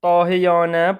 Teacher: Dahiyanədə hər iki a uzanır. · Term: sözün uzanmasıdır, uzanma